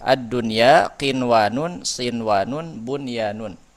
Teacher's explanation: jika nun sukun atau tanwir bertemu dengan huruf ya dan huruf waw di dalam satu kata, maka tetap dibaca idhar atau jelas dan dinamakan idhar wajib atau idhar mutlak.